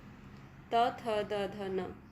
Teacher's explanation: दंत्य। दांत और जीभ के स्पर्श से बोले जाने वाले वर्ण